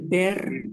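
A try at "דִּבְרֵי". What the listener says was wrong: Bukan di ber, di fre.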